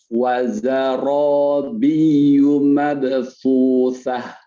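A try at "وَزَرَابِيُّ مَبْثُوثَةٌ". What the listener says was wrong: Baik, itu ada ya bertasydid. Tekan. Belum, kurang biyu mabthusah.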